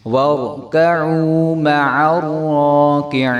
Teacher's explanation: وَارْكَعُوا مَعَ الرَّاكِعِينَ، عین کو جب ہم را کے ساتھ ملائیں گے، پہلے نمبر پہ ہم نے را کو خوب موٹا پڑھنا ہے، دوسرے نمبر پہ ہم نے را کو ایک الف کے برابر لمبا کرنا ہے، اور تیسری بات یہ ہے کہ کاف کے نیچے زیر ہے تو اس کو مع الراکعین نہیں کریں گے، بلکہ آگے یا مد آ رہی ہے، اس کو ہم عین کو جب یا کے ساتھ ملائیں گے تب ایک الف کے برابر ہم لمبا کریں گے۔